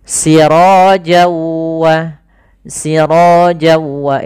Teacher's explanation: kemudian ketemu waw maka n-nya hilang, masuk ke waw, jadi wawnya double. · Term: idgham bi gunnah